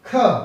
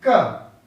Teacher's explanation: तो वाइब्रेशन नहीं होगा जब आप क ख बोलेंगे, लेकिन ख बोलने में क से ज्यादा ताकत लगानी पड़ती है। जब क बोलेंगे तो अल्प प्राण, कम ताकत, क अधिक ताकत, ख। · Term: महाप्राण